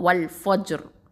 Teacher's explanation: அப்போது வல் ஃபஜ்ர் இப்படின்னு சொல்லும் போது அந்த ரா வந்து தஃப்ஹீமாக தான் ஓதணும், ஓகேவா? அந்த ஜீமை சுக்கூனையும் நம்ம என்ன பண்ணுறோம்? கல்கலாமும் கொடுக்கணும், சரியா?